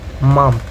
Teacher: Example of nasal consonant in English. First is bilabial nasal, produced by closing the lips and allowing air to escape through the nose